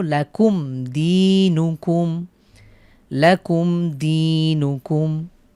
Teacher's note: মিম সাকিনের পরে দাল হয়েছে আমরা গুন্না ছাড়া মিলিয়ে পড়বো